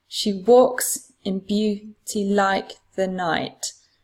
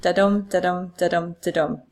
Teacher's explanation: the iambic pattern is the unstressed syllable followed by a stressed syllable